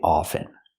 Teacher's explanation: often or is it often well people say it both ways I prefer to pronounce it with the silent t i don't pronounce the T I say often I speak English